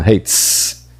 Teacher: Então você vai tirar a corda vocal do S fazendo hates